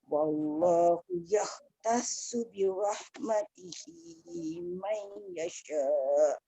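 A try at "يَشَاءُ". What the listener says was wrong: Tak cukup Bonda. Yasha tu. Cuba ulang balik, ambil nafas dulu.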